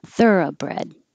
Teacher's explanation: that o can change to uh because it's not stressed